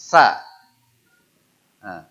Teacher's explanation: Ujung lidah jumpa ujung gigi seri atas, desis